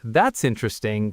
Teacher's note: flat with no emotion, it sounds like you're politely saying, I don't care.